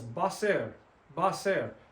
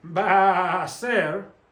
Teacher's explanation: Now notice how ba ends in a, and a is a. So these two sounds run together. Even though it's 3 words, it's 2 syllables.